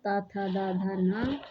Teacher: ऊपरी दांतो के निकट से दंत से बोले जाते हैं